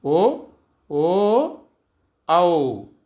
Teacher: కంఠము మరియు పెదవల నుండి పుట్టినవి అని అర్థం